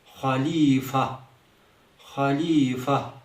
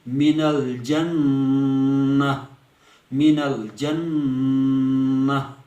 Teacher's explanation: گول ہا کی ساکن آواز نکلے گی بنا کسی حرکت کے